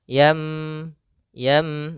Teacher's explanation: Yang di sini adalah suara nunnya atau suara tanwinnya dirubah menjadi suara huruf mim. Maka di sini ada huruf mim kecil di atas huruf nun sukun, supaya kita mengganti nunnya diganti dengan huruf mim. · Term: iqlab